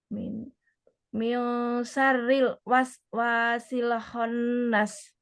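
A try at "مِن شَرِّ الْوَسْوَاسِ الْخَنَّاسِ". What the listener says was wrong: Shin, bukan sari, tapi sha, sha, waswasi, paling waswasi. Wawunya, wawunya panjang. Dia bukan waswasi, tapi waswasi. Onas.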